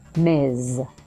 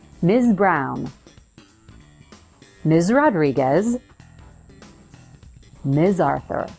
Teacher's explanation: it's pronounced with a Z so buzz your vocal chords at the end